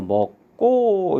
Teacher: 예사 소리와 예사 소리가 만나니까 뒤에 예사 소리가 된소리로 이렇게 이제 발음이 되겠죠